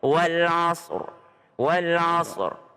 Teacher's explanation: jangan wal asr hilang rnya harus ada rnya